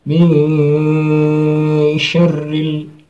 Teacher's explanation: menyamarkan suara nun di antara suara nun dan shin. di antara nun mati dan huruf yang ditemunya, yaitu shin. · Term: Eva